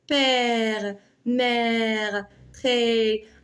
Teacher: Mais regardez l'accent grave. L'accent grave, c'est une voyelle qui est ouverte. La langue, elle est plus basse, c'est plus avancé que pour eux.